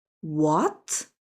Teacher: The second tone, rising up like, what? Surprising sound.